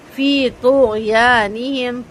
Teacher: غین کی آواز ہلکی سی چلے گی اور تو پر ہوگا